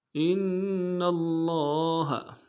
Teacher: حمزہ کو نون ساکن کے ساتھ ملانا ہے، نون ساکن کے اوپر تشدید ہوں گے، زور دیں گے